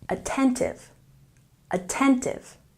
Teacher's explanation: Attentive has stress on the second syllable.